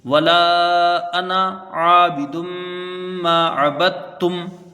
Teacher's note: دال کا تا میں ادغام ہے، کیونکہ دال کا اور تا کا مخرج ایک ہے، اس لیے یہاں پر یہ ادغام ہوا ہے، تو دال کا تا میں ادغام ہے، تو با کو تا سے ملا کے پڑھیں گے، تا کو پھر میم سے ملائیں گے۔